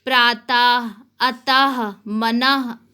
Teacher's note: विसर्ग, जिसका उच्चारण हा के समान होता है।